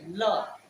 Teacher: ला जब हम लोग बोलते हैं तो हमारे मुंह से हवा साइड से निकल जाती है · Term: पार्श्विक